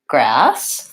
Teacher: to be an S sound instead of a Z sound and the vowel in grass is vowel ah which is the black cat vowel and something to watch out for with this one is of